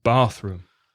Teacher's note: Remember to put the stress on the first word, bathroom.